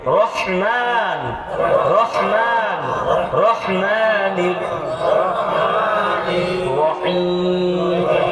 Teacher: ওই হা টা গলার ভিতর থেকে আসবে কণ্ঠনালীর মধ্যখান থেকে